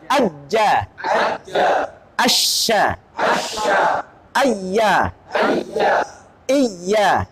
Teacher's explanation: Waktu mengucapkan iya itu tengah lidahnya naik · Tengah lidah dengan langit-langit hurufnya jim shin ya.